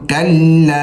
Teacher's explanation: ये छोटी मद है तो इसको कम से कम 3 अलिफ के बराबर और 5 के बराबर भी खींच सकते हैं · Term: मद्दे मुनफसिल